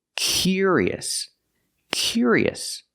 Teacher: a different sound we need the sound y y curious curious so we have the C Sound plus the Y sound like yellow and yesterday · So we have the k sound plus the y sound